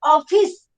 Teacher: આનો ઉચ્ચાર પોળો છે એટલે આને આપણે વિવૃત કહીએ. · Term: વિવૃત ઉચ્ચાર